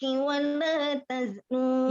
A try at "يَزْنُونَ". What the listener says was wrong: Yaznun. Titiknya di bawah. Ya, pendek.